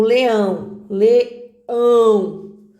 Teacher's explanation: leão é a última sílaba que é forte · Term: oxítona